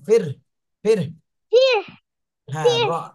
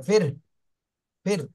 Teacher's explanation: ফির হ্যাঁ বলেনফিরফির আগে র বলতে হবে ফির ফির ফির র বলে তারপরে বাতাস বের করতে হবে